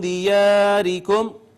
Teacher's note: ادنا حلق اس کا مخرج ہے, را مکسور ہے, اس وجہ سے اس کو باریک پڑھا